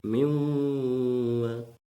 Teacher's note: mim tanwin bertemu dengan huruf waw, yaitu ilmiwa, didengungkan dan ditahan 2 harokat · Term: idgham bihunah